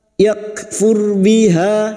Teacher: Fa iyakfur biha, yak kaf sukun lagi yang memiliki sifat siddah dan hamas, yak ra sukun yang didahului dhammah kita baca tafkim. Yakfur biha, fathah diikuti alif, ha 2 harokat kita panjangkan.